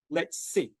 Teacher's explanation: the S of let's and sit, it's the same sound. So we would link that